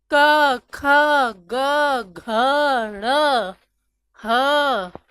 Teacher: कंठ का प्रयोग करके जिन वर्णों का उच्चारण किया जाता है वो कंठ होता है